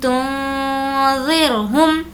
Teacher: हमने नून की आवाज़ को नाक में इसलिए छुपाया है कि यहाँ पर नून साकिन के बाद ज़ाल आया है और ज़ाल हुर्फ़े इख्फ़ा में से है।